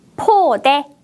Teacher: 첫 번째 음절을 발음할 때 바람을 많이 내보냈어요.